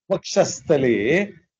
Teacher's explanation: What happens to the Visarga? Visarga changes into the Sakara.